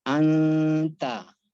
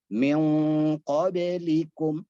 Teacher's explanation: makhraj huruf nun yang dibaca ikhfa bergeser atau berpindah dari makhrajnya dari tarf al-lisan ke dekat makhraj masing-masing huruf ikhfa.